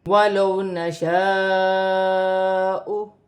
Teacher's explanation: واو ساکن سے پہلے زبر ہے، واولین بنے گی، اسے کھینچا نہیں جائے گا